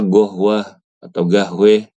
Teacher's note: kalau di Mesir huruf qof dijadiin G ya · kalau di Mesir huruf qaf dijadiin G, ya, huruf qaf jadi G, ya, misalkan kopi itu kan qohwah, dibaca gohwah atau gahweh, itu contoh saja. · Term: qof jadi g